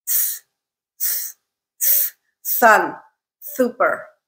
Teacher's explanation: is called a frontal lisp and what that means is that the tongue is in a further forward position than is appropriate for a good s sound